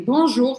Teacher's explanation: Ó U em francês, eu não falo essas letras separadas. Eu faço a matemática das letras e eu digo U, como em português, sem biquinho